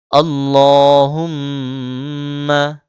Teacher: আল্লাহুম্মা, আল্লাহ, ল মোটা করে, হুম এখানে মিমে তাসদিদ হয়েছে, গুণনা করতে হবে।